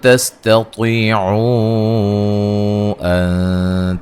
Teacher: و مدہ کے بعد حمزہ دوسرے کلمہ کے شروع میں آ رہا ہے، مد جائز ہوگی